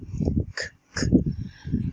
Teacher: احنا لو حطينا ايدينا على الحنجره واحنا بننطق مش هنحس بالفايبريشن ده